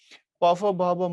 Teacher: প ফ ব ভ ম এগুলো ঠোঁটে উচ্চারিত হয় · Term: ওষ্ঠ বর্ণ